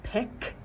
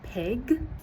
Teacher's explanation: at the end of words, they're shutting off their voice when their voice should stay turned on, like saying pick instead of pig. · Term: Final consonant devoicing